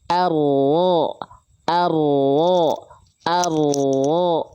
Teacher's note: yang nempelnya punggung lidah, bukan betul-betul, ya, bukan betul-betul si ujung lidahnya, tapi punggung lidahnya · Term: huruf ro